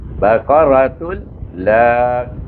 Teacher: Kemudian ta baris depan dua tun tetapi bertemu dengan lam di sini. Apabila tanwin bertemu dengan lam baca dengan idgham bila gunnah tanpa dengung terus masukkan tun itu terus jadi tul.